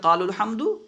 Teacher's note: اجتماع ساکنین کی وجہ سے حرف مد جو ہے گر جائے گا۔ وہی بیان کر رہے ہیں کہ اجتماع ساکنین کی وجہ سے، اجتماع ساکنین کی وجہ سے گر جائے گا، مگر وقف میں باقی رہے گا، اگر وقف کریں گے تو باقی رہے گا۔ · قالو، صرف قالو کہیں گے تو یہاں پہ واو پڑھیں گے، باقی رہے گا، ملا کے پڑھیں گے قال الحمد تو یہاں پہ واو جو ہے گر جائے گا